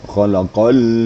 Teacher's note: Kemudian alladzi khalaqal mauta, juga harus ada penekanan sehingganya lam itu muncul sifatnya. Sifatnya adalah inhiraf, ada sedikit naik ya